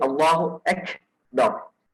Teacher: If they extend that ka too much, then that is wrong. It has to be slight, and it is called as hams. There is continuity in your breathing.